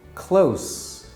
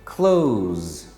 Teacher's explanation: We only have two choices, S or Z. S is unvoiced and Z is voiced.